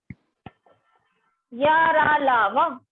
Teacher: इनके उच्चारण के समय जीभ मुख के किसी भाग को पूरी तरह स्पर्श नहीं करती। क्या है, इसके उच्चारण में क्या होता है, जो आपकी जीभ होती है वो मुख के किसी भी भाग को क्या करती है, स्पर्श नहीं करती है। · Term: अंतस्थ व्यंजन